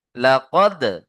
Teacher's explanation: চলেন তারপরে দেখেন লাকদ দালের উপরে সাকিন দাল হরুফে কলকলা পাঁচটি অক্ষরের একটি তাই না কফ ত বাজিম দাল তার মধ্যে কি এসছে দাল দালের উপরে সাকিন তাই আমরা কলকলা করব